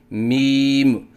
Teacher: غلطیوں کی نشاندہی: آواز ناک میں لے کے جانا، جیسے میم، یہ غلط ہے۔ آخر میں میم کے اوپر قلقلہ کرنا، جیسے میم، یہ غلط ہے